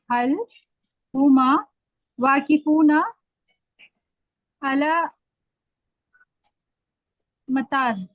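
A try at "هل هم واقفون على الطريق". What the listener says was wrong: एक गलती और आपने कर दी, हुमा नहीं, हुम। अब आप ही मुझे बताएंगे क्या डिफरेंस है दोनों में, हुमा और हुम में क्या डिफरेंस है?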